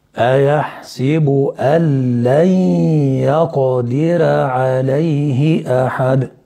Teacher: إن لام جت بعد النون الساكنة يبقى هندغم مع عدم وجود الغنة، اسمه إدغام بدون غنة اللي هو الإدغام الكامل.